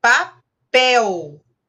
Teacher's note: A sílaba tônica é o pel aí, que é uma oxítona.